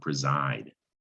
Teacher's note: that s and preside if you listen to it that makes a z sound